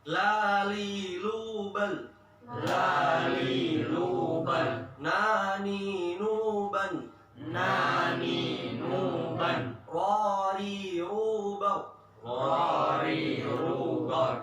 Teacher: kalau lam di dekat ini gusi sama gigi, nun mundur dikit, ro mundur dikit